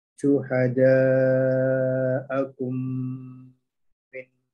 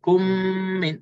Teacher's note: Mim mati bertemu dengan mim. Jadi kita masukkan habis dan qadar dengung di situ 2 harakat. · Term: idgham syafawi